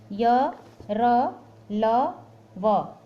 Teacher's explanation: अंतस्थ व्यंजनों में जीभ मुख के विभिन्न भागों का पूरी तरह स्पर्श नहीं करती है, अर्थात आधा स्पर्श करती है और आधा नहीं।